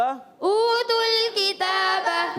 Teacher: اور تل اوتول نہیں کریں گے، اوتول نہیں تل. تا کی پیش کو ڈائریکٹ لام سے ملائیں گے، واو مدہ یہ حذف ہو گیا. ایک قاعدہ کلیہ ہوتا ہے، تو پہلا ساکن حرف مدہ ہو تو وہ حذف ہو جاتا ہے.